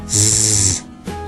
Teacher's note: Sin embargo, para hacer el sonido de la Z en inglés vamos a hacer lo mismo, ¿no? Es decir, vamos a hacer la S, pero ya no solo expulsando aire, sino usando las cuerdas vocales. Es decir, ahora vamos a hacer este sonido zzz, ¿sí?